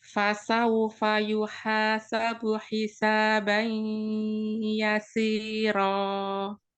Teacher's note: jadi tidak langsung ke ya, jadi ada dengungnya masuk ke hidung